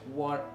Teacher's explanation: one thing that actually interests me in the British English is the glottal sound, where the T as a sound becomes voiceless